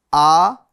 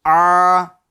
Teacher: तो हमजा ये शुरू हल्क से अदा होता है। ठीक है? और ये ऐन है। यह दरमियान यानी बीच वाले हल्क से अदा होता है।